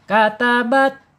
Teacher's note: Ujung lidah menyentuh pangkal gigi seri.